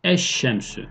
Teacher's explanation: İdgam-ı şemsiyede olduğu gibi elif lam takısındaki lam harfi şin harfinin içine katıldı. Eş-şemsü. Şin şeddelendi.